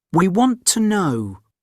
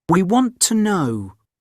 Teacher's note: he doesn't pronounce the T at the end right he doesn't say he want to know he says he